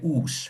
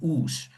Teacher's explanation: Long vowel, no n, and then still the fricative s.